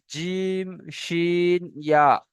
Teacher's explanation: জিভের মাঝখান উপরে তালুর সাথে লাগিয়ে উচ্চারণ হয় জিম শিন ইয়া